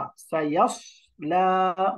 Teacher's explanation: এখানে সদটা উচ্চারণ হওয়া চাই, সাইয়াস লা বলা যাবে না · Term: মোটা অক্ষর ইস্তেআলা